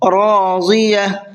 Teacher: را کو بھی پر کر کے پڑھنا ہے اور ضاد کو بھی پر کر کے پڑھنا ہے